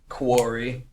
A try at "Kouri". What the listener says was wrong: You speak with guttural sounds. Say Kouri.